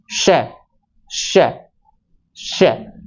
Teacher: शलगम वाला स जो तालव्य स है, उसका उच्चारण करेंगे तो मुंह से ऐसे लगेगा कि जैसे सीटी सी बज रही हो